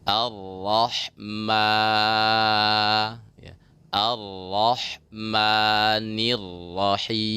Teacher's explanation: Jangan lupa di mim ya berbaris fathah bertemu dengan huruf mat yaitu alif, maka tetap mimnya jangan sampai keluar melalui hidung ya, tapi semata-mata juga keluarnya dari mulut